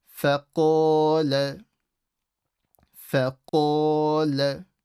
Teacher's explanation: So fa is not stretched. Then the qaf is full mouth with an alif. And the la is not stretched. So don't say faqala ana when you're reading.